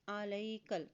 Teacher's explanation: کاف کی زبر کو لام کے ساتھ ملاتے ہوئے پڑھیں گے، دیکھیں لام کے اوپر جزم ہے